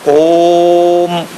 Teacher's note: कहा गया कि ओ को 3 मात्रा 3 गुना ज्यादा ऊंचा स्वर लेकर बोलना, ओम। और जो मां है वो एकाएक आपके मुंह से निकले। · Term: प्लुत